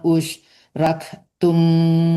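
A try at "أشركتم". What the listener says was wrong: Asyrak bukan usyrik.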